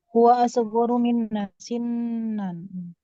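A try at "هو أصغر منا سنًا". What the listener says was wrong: Mumtaz.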